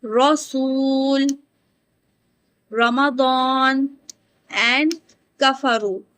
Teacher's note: the back of the tongue raises towards the roof of the mouth and the throat become becomes slightly narrows. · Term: heavy raw